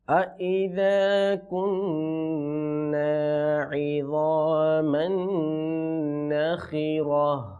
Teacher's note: ওয়াকফের সময় ওই গোলতাটা হা দ্বারা পরিবর্তন হয়ে যাবে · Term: হায়ের উচ্চারণ